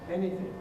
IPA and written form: ˈeniθɪŋk (anything)